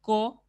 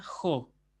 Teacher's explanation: decir co queda Jo sí por la sencilla razón de que como la segunda palabra tiene espíritu áspero se aspira la consonante anterior